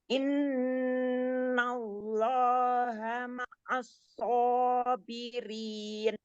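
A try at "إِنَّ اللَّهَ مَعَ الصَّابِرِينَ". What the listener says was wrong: Lamnya kan tadi katanya tebal, jadi ditebalkan ya. Innallaha ma'as-sabirin.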